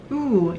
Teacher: You get words, for example, food, which has 1 back vowel, ooh. And when you're making the sound ooh, you can feel that the air flows pretty smoothly.